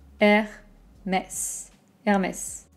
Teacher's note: en français, on ne prononce pas le H. Donc, imaginez qu'il n'existe pas. R, comme la lettre R.